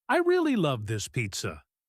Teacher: you know I am happy even if you don't know the word pizza, because my voice goes up. If I say, "I am so disappointed with this pizza," my voice goes down, it sounds serious.